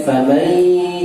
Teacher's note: famai tergabung dengan ya itu idgham bi gunnah